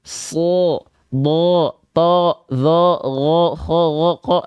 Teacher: ketika fathah dia vokal o maka dia termasuk ke dalam huruf yang tebal